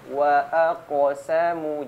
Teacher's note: ketika huruf kaf bertanda sukun, bacanya tidak boleh ada jeda. Jadi pantulannya bersambung. Wa aqsamu, jangan wa aqsamu ya.